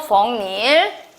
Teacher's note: 뒷말이 이야, 여유, 유로 시작하면 니은이 첨가되고 음절의 끝소리 규칙에 의해서 기억으로 바뀝니다. 대각선 봤더니 비음이 아닌 거에 영향 줘서 비음화 시켜서 부엌일.